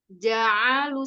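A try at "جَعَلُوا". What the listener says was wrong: Fathahnya jangan tercampur sama ain. Jangan ja'alu tapi ja'alu, bukan ja'alu.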